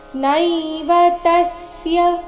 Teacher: ನೈವತಸ್ಯ ತ ಮೇಲೆ ಆಘಾತ ಗಮನಿಸಿ